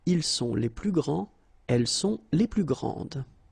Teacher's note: so you don't pronounce this final S